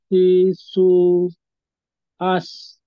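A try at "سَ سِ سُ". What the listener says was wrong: Ini belum kena makronya. Coba mungkin bisa pakai jari, dikeluarkan lidahnya, tunjuk tengah lidahnya. Nah, jadi lidah kita nih, kalau dari depan kita rasa aja kira-kira yang tengah mana nih. Kita kenakan, kemudian naikin yang kita tengah, yang kita sentuh tadi. Dinaikkan kalau yang lain. Sya, jadi seperti itu.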